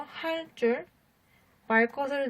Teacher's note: 또 관형사형 어미인 리을 뒤에 예삿소리도 된소리로 바뀌는데요. 예를 들어 할 줄, 말 것을 등이 있습니다.